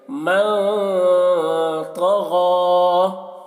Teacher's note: اور دیکھیے یہ یا ہے، یا، تو اس یا کو نہیں پڑھا جائے گا کیونکہ اس میں کوئی حرکت بھی نہیں ہے۔ غین کے اوپر کھڑا زبر ہے، تو غین کو کھینچ کر پڑھیں گے